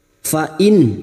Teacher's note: Nun sukun bertemu ain dibaca jelas tanpa mendengung. Idhar halqi.